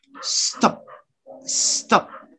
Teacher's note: you don't release the air you maintain the air in your mouth